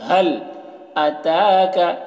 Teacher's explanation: اس ہا کی آواز بغیر ہوا کے نکلتی ہے اور اس کی آواز بھاری ہوتی ہے